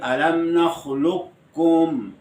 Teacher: قاف کو کاف بنا کر اور پھر کاف کا کاف میں ادغام کرتے ہیں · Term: ادغام تام